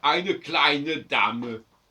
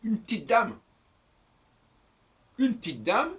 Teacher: on n'entend pas le E du une, on n'entend pas les deux E de petite, et on n'entend pas le E de dame.